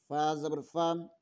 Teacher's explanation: فا کا مخرج ادا کرتے ہوئے اوپر والے دانتوں کا کنارہ نیچے والے ہونٹوں کی تری والے حصے پر لگے تو فا ادا ہوتا ہے۔ فا کو ادا کرتے ہوئے ہونٹ کو گول ہرگز نہ کریں۔